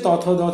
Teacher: জিহ্বার অগ্রভাগ উপরের পাটির দাঁতের যে নিচ দিকের অংশ, সেই নিচ দিকের অংশ স্পর্শ করে উচ্চারিত হয়, তার জন্য এদের উচ্চারণ স্থান অনুযায়ী নাম হয়েছে দন্ত ধ্বনি।